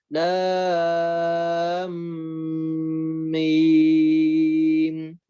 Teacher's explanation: begitu masuk ke mim tahan dulu gunnah